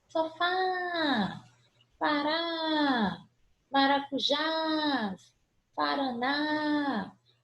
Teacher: Última sílaba prolongada, sílaba tônica, terminada em A, vai ser acentuada. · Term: última sílaba tônica